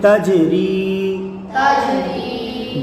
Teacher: جیم حرف قلقلہ ہے، حرف قلقلہ جب ساکن ہو تو ان میں قلقلہ خوب ظاہر ہوتا ہے